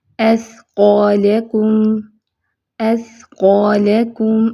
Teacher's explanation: اب اس کو اسقالکم نہیں پڑھنا، ٹھیک ہے؟ سٹی کی آواز نہیں آنی چاہیے۔